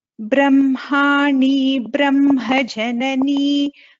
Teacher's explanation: even in the first padam, Brahmani, Brahma Janani, so ba is getting doubled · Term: dvitvam